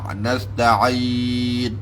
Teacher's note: Itu hal yang ain yang betul-betul keluar daripada makhraj tengah halqum.